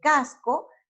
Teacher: la fuerza va en la penúltima sílaba